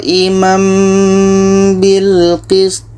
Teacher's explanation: bunyi tanwin sudah enggak ada kita pindahkan kepada mim · kalau ada mim kecil seperti ini itu bermakna hukumnya ikqlam jadi bunyi tanwin ini kita tukar kepada bunyi mim dan di sini ada dengung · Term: iqlab